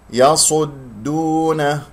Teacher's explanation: تضم الشفتين من الصاد إلى أن تصل إلى النون، هذا خطأ، يجب أن ترجع ضم الشفتين إلى الوضع الطبيعي في الدال الساكنة